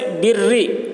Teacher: مشدد را کے نیچے زیر ہے تو باریک پڑھیں گے۔ جیسے بری، بری میں دیکھیے را کے اوپر تشدید ہے لیکن اس را کے نیچے زیر ہے، اس وجہ سے اس را کو باریک پڑھیں گے، بری۔